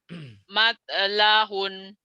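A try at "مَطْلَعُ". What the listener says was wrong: Ain itu mah Bu. Ain, ain Bu, ain Bu. Matla'un, kemudian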